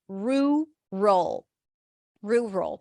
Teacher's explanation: is Ru roll Ru roll it's a relaxed uh r r so round your lips and then the cook look book vowel R and then it's an R sound aw and an L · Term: relaxed r